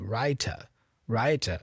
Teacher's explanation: the R is not really pronounced like curl R like after a vowel